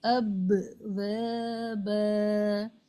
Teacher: tightly دونوں lips کو join کر کے چھوڑنا ہے، جو قلقلہ ہے، جس کی وجہ سے آواز لوٹتی ہوئی دہرا کر سنائی دے